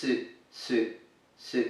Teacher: the U in Japanese is a very closed sound, closer perhaps to German or French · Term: U sound